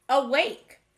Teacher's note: awake has the schwa sound at the beginning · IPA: /ə/